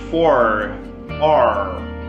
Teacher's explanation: ele vai ter esse som de R caipira mesmo